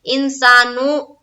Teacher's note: نو کو جلد پڑھیں گے پیش کی حرکت کے ساتھ، اور معروف پڑھیں گے